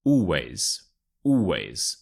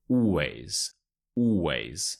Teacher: you want to stress the first syllable all and the ways is quite stretched out as well so always always so you want the ways ways the second